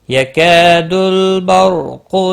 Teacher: را ساکن سے پہلے زبر ہے، پر پڑا جائے گا